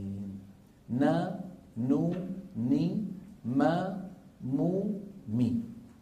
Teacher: تكون الغنة أنقص ما تكون، يعني أقصر ما تكون، في النون والميم المتحركتين